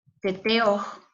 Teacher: Se escribe con H justo porque es una aspiración muy leve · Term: saltillo H